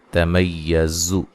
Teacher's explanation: زا کو زور سے ادا کرنا ہے، سختی سے، سی ٹی کی آواز پیدا ہو اس میں، ٹھیک ہے؟ حروف صفیریہ میں سے ہے یہ۔